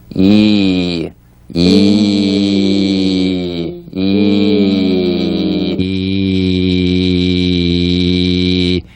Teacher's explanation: The Y buzz is the sensation of the E sound as a buzz or vibration on the gum ridge. Right here on the gum ridge, right above the front teeth, you feel a little buzz of the E there.